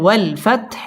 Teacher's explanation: ওয়াও ঠোঁটগুল করে উচ্চারণ করতে হবে।